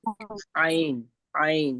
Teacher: ऐन ऐन देखिए दोनों मोटे हर्फ नहीं मोटे तो नहीं कहेंगे ऐन और हल हरूफ हलक है ठीक है हलक से निकलने वाले तो इनके लिए हमें बी हलक के बीच वाले हिस्से पे थोड़ा सा स्ट्रेस देना है बहुत ज्यादा नहीं